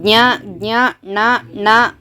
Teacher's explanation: ಇವು ಮೂಗಿನ ಸಹಾಯದಿಂದ ಮಾತ್ರ ಉಚ್ಚಾರ ಮಾಡ್ತೀವಿ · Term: ನಾಸಿಕಗಳು